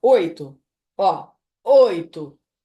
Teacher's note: E o I? Oito. Ele quase some. Então, ele é semivogal.